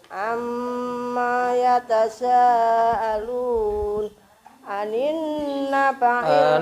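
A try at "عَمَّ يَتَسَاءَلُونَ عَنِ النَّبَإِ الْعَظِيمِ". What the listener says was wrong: Nadanya salah ya. Nadanya naik dulu. Ayat pertama.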